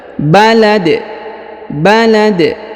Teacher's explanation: Ya, huruf dal karena dia berada di ujung ayat atau di ujung bacaan, maka kita sukunkan sehingga apabila dia berharokat sukun maka kita baca pantul atau kita qalqalahkan huruf dalnya